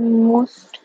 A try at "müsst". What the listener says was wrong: এখানে এই মুস্ট হবে না মুইস্ট হবে, এখানে উমলাউট হবে না উ হবে, হ্যাঁ, এখানে কি উমলাউট হবে না? আচ্ছা, ইয়া মুইস্ট